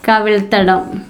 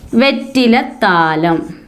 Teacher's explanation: പിരിച്ചെഴുതിയതിലെ ഉത്തരപദത്തിലെ വ്യഞ്ജനം, ഈ ആദ്യ വ്യഞ്ജനം ഇരട്ടിക്കുകയാണ് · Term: ദ്വിത്വസന്ധി